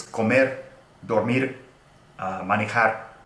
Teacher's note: if you have the single R at the end, it's comer, dormir, manejar, and it's a one flap of the tongue